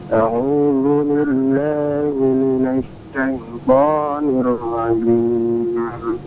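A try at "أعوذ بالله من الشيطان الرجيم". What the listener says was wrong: Baik, shinnya alirkan Pak ya.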